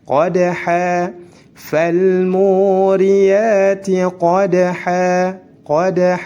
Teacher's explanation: Fathatain berdampingan dengan alif apabila dalam keadaan waqaf, maka dirubah menjadi fathah biasa dan dipanjangkan 2 harokat.